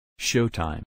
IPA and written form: ˈʃoʊtaɪm (showtime)